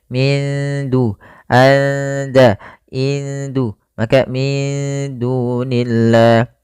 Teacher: pada lafal da, di sini nunnya disamarkan ke da, kita namakan dengan bacaan ikhfa